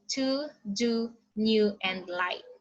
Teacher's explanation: Okay, so alveolar is the primary constriction is between tongue and the alveolar ridge